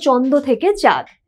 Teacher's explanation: নটা লোপ পাচ্ছে এবং তার পরিবর্তে কি হয়ে যাচ্ছে, আগের যে বর্ণটা সেই বর্ণটা আকার যুক্ত হচ্ছে এবং তার সঙ্গে একটা চন্দ্রবিন্দু আসছে